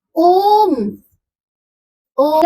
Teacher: जिसमें दीर्घ से भी अधिक समय लग रहा है या ह्रस्व से तीन गुना समय लग रहा है वो होता है प्लुत स्वर। जैसे ओम ओम यानी इसका तीन गुना समय इसमें लग रहा है।